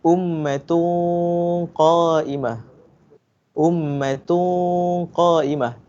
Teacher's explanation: Saya punya dengung tu tebal. Saya punya mulut dia nampak bulat.